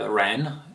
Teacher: Ren in the second tone rising